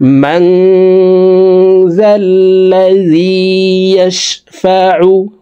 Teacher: ম্যাং মাং এখানে ইকফা গুন্না, নুন সাকিনের পর ইকফার 15টি হরফের ভিতরে একটি হরফে জাল আসছে, এই কারণে এই নুন সাকিনকে নাকের ভিতরে লুকাইয়া গুন্নার সহিত পড়ব।